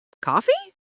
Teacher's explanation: We might just say coffee with a rising intonation.